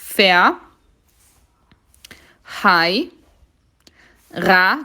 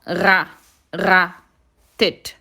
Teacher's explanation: ra que tem que vibrar